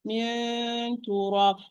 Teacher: I'm producing the one and I'm closing the nose, but still there is a sound because this is correct. With ikhfa, there is a hint of sound, slight sound coming out with the gunna.